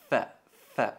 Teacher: la letra fa es pronunciada apretando la extremidad de los incisivos superiores sobre el interior del labio inferior. Fa. Tocamos los dientes en el labio inferior.